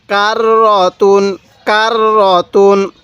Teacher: এই র এর উপরে তাজদিদ আছে এই র টা আমরা দুইবার উচ্চারণ করব